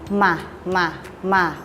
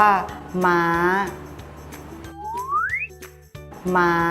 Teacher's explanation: ให้ริมฝีปากบนและล่างปิดชิดกันพร้อมทั้งทำเสียงขึ้นจมูก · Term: มอม้า